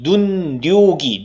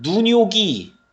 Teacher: 이거 연음되는 게 아닙니다. 연음되는 게 아니라 니은이 첨가되는 거예요.